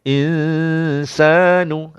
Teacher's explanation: Nun kosong. Dengung dalam hidung, tahan di hidung 2 harakat